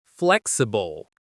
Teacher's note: The pronunciation is flexible. The stress is on the first syllable.